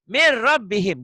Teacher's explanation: Kalau nun mati ketemu ro, nun matinya N-nya jadi R. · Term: idgham